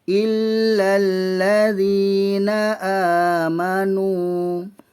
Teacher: Zi panjang 2 harakat, A 2 harakat dan Nu 2 harakat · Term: Mad asli 2 harakat